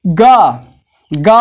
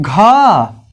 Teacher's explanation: गा बोलने में कम हवा की आवश्यकता पड़ती है, घा अधिक